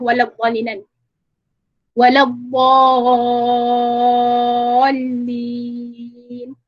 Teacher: dhalin ini adalah 6 harakat dan hukumnya adalah mad lazim, mad lazim kalimi muthaqqal, dan mad lazim yang kalimah yang beratlah muthaqqalan.